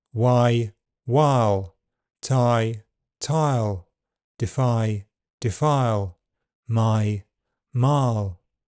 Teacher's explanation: The second part of the diphthong can become central and virtually disappear before dark L. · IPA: /ʌɪ/